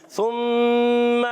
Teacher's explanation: زبان کو اٹھا کر اور سامنے والے دانتوں کے کناروں سے جب لگائیں گے تو سا ادا ہوتا ہے۔